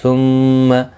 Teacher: میم مشدد پر بھی گنہ ہوگا